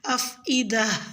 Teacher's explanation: لفظ والافئدہ میں گول تا پہ وقف کی صورت میں ہا کی آواز کے ساتھ وقف کریں یعنی افئدہ۔